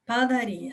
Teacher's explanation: sílaba tônica padaria é o RI portanto ela é paroxítono